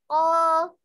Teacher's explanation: Kalau isti'la itu huruf-huruf yang tebal seperti kho, gitu ya, yang mengangkat pangkal lidah.